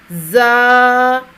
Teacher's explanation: دبا کر پڑھنا ہے اس کو، باریک اور سیٹی جیسی آواز میں